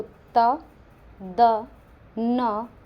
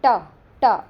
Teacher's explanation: त और द में आपके जो जीभ लग रही है वो ऑब्वियसली दांतों से लगेगी